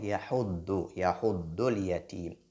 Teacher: Dad, c'est une lettre emphatique. Donc, elle doit être lue avec lourdeur.